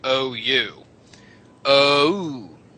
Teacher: every time you say o you end it with ooh you're saying two vowels at the same time